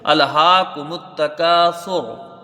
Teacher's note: جب وقف کریں گے تو وقف بالاسکان، مد یہاں کوئی نہیں بنے گا۔ را دونوں حالتوں میں پر ہوگی، چاہے آپ وقف کریں چاہے وصل کریں، کیونکہ را کے اوپر پیش ہے۔ اگر وقف کریں گے تو را ساکن سے پہلے پیش آ جائے گا، تب بھی را پر ہوگی، ٹھیک ہے۔